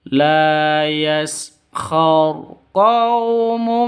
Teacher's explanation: Masuk ke mim itu disertai dengung dua ketukan. Karena idgham bighunah.